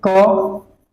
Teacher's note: इसमें अल्प यानी कि थोड़ा सा हवा निकलता है ना। इसमें मुख द्वारा थोड़ा सा, मुख से इसमें थोड़ा कम हवा निकलता है, मुख से थोड़ा कम हवा निकलता है। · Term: अल्प प्राण